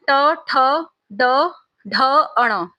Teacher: तो ये जीभ को मोड़कर उच्चारित होते हैं दोस्तों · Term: मूर्धन्य व्यंजन